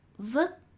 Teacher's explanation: words with t at the end are pronounced like with a k